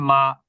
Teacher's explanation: দুই ঠোঁটের বহির্ভাগ থেকে যুক্ত করে